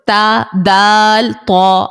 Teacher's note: है और इन तीनों का मखर जो है वह सेम है जुबान की नोक जब सामने के दो दांतों की जड़ों से लगे तो ता दाल त निकलता है